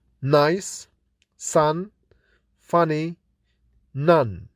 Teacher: In the nasal sound n, the volume is lowered so that the air can escape through the nasal cavity. N is articulated with the tongue tip pressing the alveolar ridge.